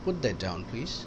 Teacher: normal intonation ہے تو فال ہوگا